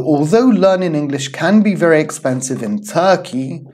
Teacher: our intonation is going to go up then we're gonna have a small breather and then we're going to continue with the second one and our intonation will eventually come down